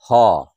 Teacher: আর হচ্ছে হ, এই হটি উচ্চারণ করার সময় হ, একটা শ্বাসবায়ু বেরিয়ে আসছে গরম, এই জন্য এদেরকে বলা হয় উষ্ম বর্ণ